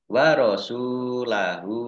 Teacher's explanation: sin domah wawu sukun mat tobi'i panjang 2 harokat.